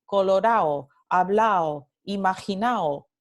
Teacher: en el centro norteño, mayormente, la D intervocálica se elide en las palabras que terminan en ado